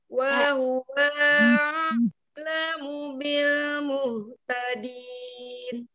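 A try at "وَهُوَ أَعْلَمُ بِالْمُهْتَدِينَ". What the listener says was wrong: Yang wow yang kedua jangan dipanjangkan, satu harokat saja. Wa huwa wa huwa wa huwa. Wa huwa a'lamu. Sekali lagi yang bil muhtadin. Bil muhtadin. Mbaknya seperti bilang i. Bi, bi, bi, bi. Seperti dibuka.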